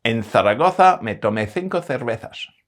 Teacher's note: And some varieties have the dental fricative /θ/. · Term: dental fricative th